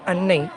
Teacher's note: As example, he said in the first word of the above poem, Annai, the first syllable is heavy because it is closed, like un. And the second is heavy because it has a long vowel, nay.